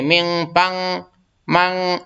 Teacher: نون کی آواز کو ناک میں چھپا کے پڑھیں گے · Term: اخفاء